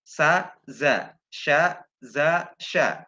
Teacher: Pokoknya za ini keluar antara tengah-tengah lidah bagian atas dengan langit-langit.